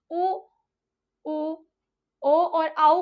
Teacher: उच्चारण स्थान उ उ ओ और औ का माना गया है जब हम उ बड़ा उ ओ और औ का उच्चारण करते हैं तो पूर्ण रूप से हमारे होठों का जो आकार होता है वोह बाहरी तरफ दिखाई देता है जो वृत्ताकार कहलाता है